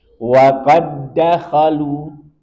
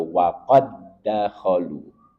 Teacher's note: Huruf dal pertama bersukun tidak dibaca karena diidghamkan, dileburkan ke huruf dal yang kedua, sehingga dal pertama tidak diqalqalahkan. Maka dal di sini seakan-akan dia hilang, langsung masuk ke dal yang kedua. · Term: idgham mutamatsilain